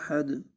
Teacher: حمزہ کو لمبا نہیں کریں گے، ہا کو بھی لمبا نہیں کریں گے، اور دال کو وقف کی صورت میں ساکن کر دیں گے اور اس پر قلقلہ کریں گے